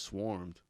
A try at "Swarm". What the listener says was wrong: Yeah, you said Swarmed. It's Swarm.